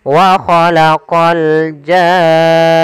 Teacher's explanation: Panjangkan janya dulu enam harakat baru masuk ke nun. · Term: mad lazim, mad lazim kalimi musaqqal